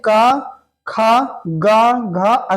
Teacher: यानी तो आवाज कहां से आ रही कंठ से